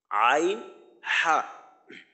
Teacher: দুই নাম্বার মাখরাজ কণ্ঠনালী বা হলকের মাঝখান হইতে উচ্চারিত হয়